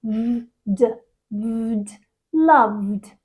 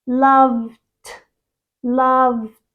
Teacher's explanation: When we add ed to the end of it, it becomes loved. 2 voiced sounds together.